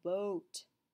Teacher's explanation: when you say the words boat, your tongue actually moves forward and creates like a O sound. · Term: O fronting